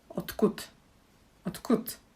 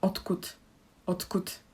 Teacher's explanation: D is voiced, k is unvoiced, so we need to there needs to be a change. So if you paid attention, I say t and k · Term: assimilation